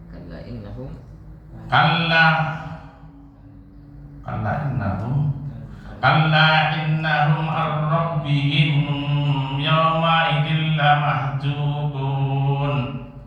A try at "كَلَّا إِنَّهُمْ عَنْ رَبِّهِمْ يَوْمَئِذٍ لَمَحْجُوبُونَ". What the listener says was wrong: Terlalu lama tawasudnya. Gunnah nun.